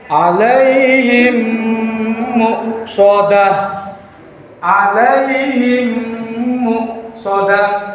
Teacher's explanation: Alaihim muqsadah. Memnya dan mem yang kedua seperti ada tasdid, padahal tidak ada tasdid. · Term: idgham mimi